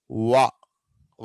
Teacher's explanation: వా అన్నప్పుడు రెండు పెదాలు రౌండ్ షేప్కి వస్తాయి, వా. ఆ తర్వాత మనకు సౌండ్ బయటకు వస్తుంది. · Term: గ్లైడ్స్